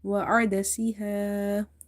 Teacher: Ain is from the middle of the throat.